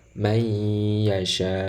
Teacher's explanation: Lafal may yasha ini disebut sebagai idgham bi gunnah. Kenapa? Karena nun sukun bertemu dengan ya.